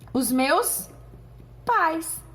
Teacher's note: primeiro eu tenho som da vogal e depois da semivogal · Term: ditongo decrescente